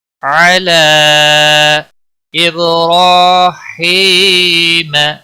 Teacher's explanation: اب با پر قلقلہ ہوگا، را کے اوپر زبر ہے اس لیے موٹا پڑھیں گے۔ ہی، یا مدہ ہے، ایک الف کے برابر کھینچ کر پڑھیں گے، ما کو کھینچنا نہیں۔